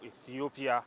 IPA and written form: ˌiːθiˈoʊpiə (Ethiopia)